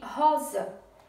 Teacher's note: a última sílaba é za e a sílaba forte é ro, de rosa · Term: paroxítona